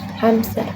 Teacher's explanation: inserted P between M and S